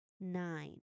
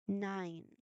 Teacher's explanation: you should consciously feel the you know soft buzzing vibration in your nasal cavity which is the physical proof that you are correctly executing the voiced um continuous nasal sound. · the air is fully redirected to flow only through your nose. So, it is a nasal sound.